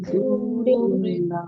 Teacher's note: सौत को मोटा भी पढ़ना है, सीटी के साथ भी पढ़ना है।